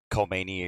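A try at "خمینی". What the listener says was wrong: you don't pronounce the K.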